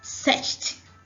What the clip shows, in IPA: sᴈ: ʧt